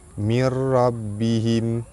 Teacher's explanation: nun mati bertemu dengan ra, hukum dia idgham bila gunnah, masuk tanpa dengung. Ra baris atas dibaca tebal.